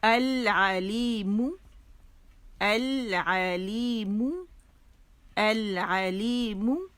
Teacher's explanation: یہ میم کا مخرج ہے، دونوں ہونٹوں کے جو خشک حصے یہ وہاں سے ادا ہوگا